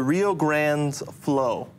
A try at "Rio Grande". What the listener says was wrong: There's an E on the end of that.